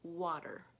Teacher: the T, when we're speaking fast, sounds more like a D sound instead of a T sound. Essentially, you're taking a voiceless consonant and making it a voiced consonant, D, because it's surrounded by voiced vowels. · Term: the T becomes a D sound